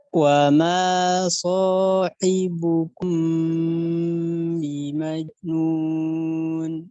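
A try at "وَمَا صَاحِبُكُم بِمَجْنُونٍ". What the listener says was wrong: Bimajnun. Jadi pantulannya harus lepas ya sebenarnya. Wa ma sahibukum.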